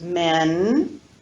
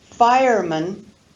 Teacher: So we have the stressed vowel e, and then when we look at the compound word fireman, we have the unstressed vowel schwa.